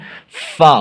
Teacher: ثنایا علیہ کا کنارہ اور نیچے کے ہونٹ کا تری والا حصہ